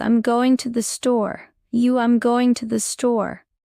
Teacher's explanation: Don't pronounce every to as to. In fast English, to often sounds like t.